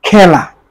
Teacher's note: একটু মুখটা বেশি খুলে, এই জন্য বিবৃত উচ্চারণ